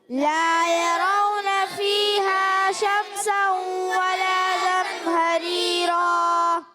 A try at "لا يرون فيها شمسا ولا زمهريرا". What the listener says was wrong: کیا ہوتا ہے یہاں پر آپ جو ہے غنے کو کم کر دیتے ہیں, بعض بچے پورا کر رہے ہیں, بعض کم کرتے ہیں, تو اس لیے پھر آگے پیچھے تھوڑا سا محسوس ہوتا ہے.